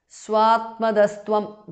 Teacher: visarga changes to su there